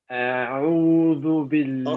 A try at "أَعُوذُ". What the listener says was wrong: Okay, I know that what you're trying to say, but don't say أعوذ and you stretch it. أعوذ right away.